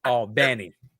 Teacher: It's on the second syllable in Albany.